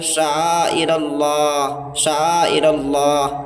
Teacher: Last والے ہا کے نیچے جو زیر ہے اس کا ہلکا سا ساؤنڈ لا کر کے سانس توڑتے ہیں۔ جیسے یہاں پہ شعائر اللہ ہی ہے تو ہم لوگ پڑھیں گے شعائر اللہ، شعائر اللہ، ٹھیک ہے۔